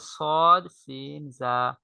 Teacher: সদ, সিন, জা জিহ্বার আগা সামনের নিচের দুই দাঁতের আগা এবং পেটের সঙ্গে লাগে